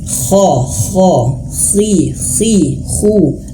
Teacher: Beliau mengucapkan kha itu tidak ada ngoroknya sama sekali, tidak ada dahaknya sama sekali. Jadi menjadi PR buat kita semua ya, jangan mengucapkan huruf kha itu ada berdahaknya.